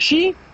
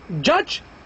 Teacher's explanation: not only the alveolar ridge is involved in their pronouncing, and not only the palatal, but both of them · They are not alveolar, they are not palatal, they are alveopalatal because they are made in a place of articulation which is between the two places, the alveolar ridge and the palatal, and as such they are called alveopalatal or palata-alveolar.